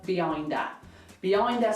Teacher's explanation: job of demonstrating how a lot of accents in the uk the words just mush together and almost sound like one big word